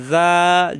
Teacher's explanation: অল্লাইলি হামজাজের ই, জাল আলিফ জবর জা, জিব্বার আগা উপরে দুই দাঁতের আগায় নরম করে এক আলিফ টান